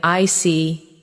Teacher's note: When you show understanding with I see, your tone drops slightly to show calmness. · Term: Intonation, intonation